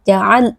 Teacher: huruf lam sukun bersifat bainiyah, pastikan ada sedikit aliran suara, jangan ditekan terlalu kuat